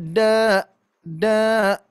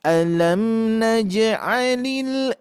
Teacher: eh lembut lembut ya eh apa eh tidak tidak terlalu panjang dibaca Dua harakat tapi ujungnya tidak nabrak ya